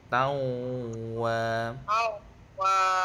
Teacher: yang betul ni kena naik ke hidung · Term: sengau